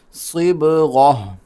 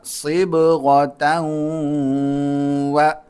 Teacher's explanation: من اللہ، با پہ قلقلہ، صاد موٹا سیٹی کے ساتھ، صبغہ، یہاں پر ہم اگر ٹھہرتے ہیں تو چونکہ تا ہے تو وہ ہا بن جائے گی، اور اگر ملا کر پڑھیں گے تو پھر تا پڑھیں گے اور اس کو واو کے ساتھ ملائیں گے اور غنہ بھی